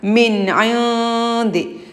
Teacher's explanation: ആദ്യം സാക്കിനായ നൂന് ശേഷം ഐനാണ്, ഇൽഹാറാണ്, വ്യക്തമാക്കി ഉച്ചരിക്കണം